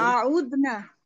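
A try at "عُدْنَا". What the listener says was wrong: আলিফ কোথা থেকে আসলো আবার? উদনা উদনা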